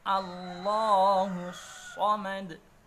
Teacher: lafadz Allahnya jelas, dibaca dengan tafkhim, dibaca dengan tebal